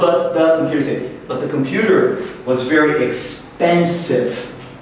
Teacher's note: so expensive is the focus word of this group